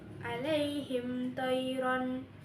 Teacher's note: Hukumnya itu izhar syafawi. Mim mati bertemu dengan th itu dibaca jelas.